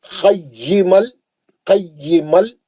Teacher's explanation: बगैर गुन्ने के हम लाम में चले गए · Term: इदगाम बिला गुन्ना